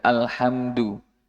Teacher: Dal dal tidak terlalu kental. Da alhamdu terlalu tebal, itu salah. Tipis sekali.